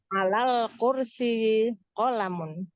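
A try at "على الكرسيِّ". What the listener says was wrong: alal kursiyi. Ya, itu kasrohnya ulangi.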